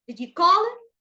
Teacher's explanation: So we start with a low pitch, then we have to raise it at the end. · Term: raising intonation